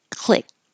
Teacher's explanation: So click, and you won't hear the final K.